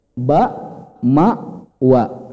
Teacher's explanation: Kalau BMW, ba, mim, wa itu 2 bibir.